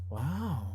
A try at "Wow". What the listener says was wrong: No, that's not. You got to go more nasally. Wow. Wow. Wow.